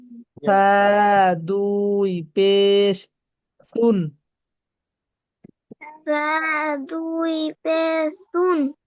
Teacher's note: বড় বড় দুই দাঁতের সাথে লাগবে আগার সাথে